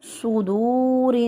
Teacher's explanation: سین اور صاد ان کو ایک ہی مخرج سے ادا کرتے ہیں، لیکن صاد جو ہے وہ موٹا ہوتا ہے اور سین باریک ادا ہوتا ہے۔ صدور، صاد کو منہ بھر کے، ہوا جو ہے وہ منہ کے اندر بھر جاتی ہے صاد کی ادائیگی میں۔